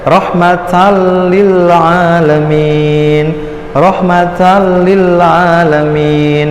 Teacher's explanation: Nah, ini kan kalau misalkan belum tahu akan dibaca rahmatan lil alamin karena ada fathah tanwin bertemu dengan lam, maka dia dibaca idgham bila guna tanpa dengung, dimasukkan tanpa dengung